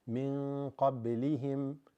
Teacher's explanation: this min, nun sakina followed by qaf makes ikhfa